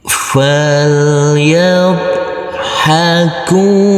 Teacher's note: huruf bad yang bersukun ini tidak boleh dipantulkan karena ini bukan bacaan qalqala huruf Kaf kita baca panjang dengan panjang dua harakat kita ulangi